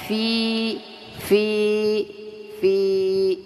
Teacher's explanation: sini dua harakat ada mad thii Ya ada mad thii Ya Sukun didahului dengan kasrah panjangnya dua harakat saja